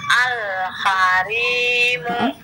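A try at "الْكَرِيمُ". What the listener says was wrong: Ka ya, bukan ha, tapi ka. Al-karimu. Bukan ha ya, bukan ha, tapi ka ya, huruf seperti ka ya. Ka, coba bilang ka.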